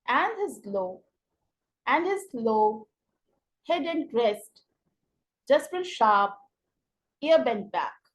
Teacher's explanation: it has Tri syllabic feet in which the middle syllable is accented